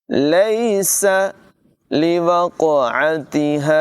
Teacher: قاف کو پر آواز میں اور کلکلے کے ساتھ پڑھیں گے، یعنی اس کی آواز خوب ظاہر کریں گے۔ عین کی آواز بھی نمایاں ہوگی، ہا کو حلق کے نچلے حصے سے ادا کریں گے۔ · لیس یہاں پر یالین ہے، اس کو نرمی سے پڑھیں گے، سین میں سیٹی کی آواز نکالیں گے